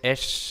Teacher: la S castellana es apicoalveolar, es esta S carrasposa